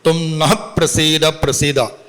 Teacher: നഹ പ്രസീദ പ്രസീദ നീ ഞങ്ങളിൽ പ്രസാദിച്ചാലും പ്രസാദിച്ചാലും ഇവിടെ നഹ എന്ന് ഉച്ചരിക്കുമ്പോൾ ആ വിസർഗം അത് അർദ്ധമാത്രയിൽ ഉച്ചരിക്കണം നമ്മുടെ ഒരു നിയമം അനുസരിച്ച് പകാരത്തിന് പയുടെ മുമ്പിൽ വിസർഗം വന്നാൽ അർദ്ധമാത്രയിൽ തും